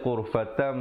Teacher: kena baca ghurfatam dengan mim yang nipis, ya. Bibir itu sekadar bersentuhan saja, hukum iqlab.